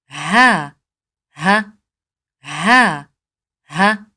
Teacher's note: اس کی ادائیگی حلق کے نیچے والے حصے سے کی جاتی ہے۔ یہ حلق کے 3 حصے ہیں اور تیسرے حصے جو بالکل دھڑ کے قریب ہے انسان کا حصہ، جس کو اقصی حلق کہتے ہیں، یہاں سے ہا کی ادائیگی کی جاتی ہے، جیسا کہ ہا ہا ہا ہا۔